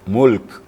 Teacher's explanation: hamasnya karena sifat Kaf itu Hamas ya Ada hembusan sedikit jadi ada yang sukun ganda di situ iaitu lam dengan Kaf jadi lam kedengaran dan Kaf juga kedengaran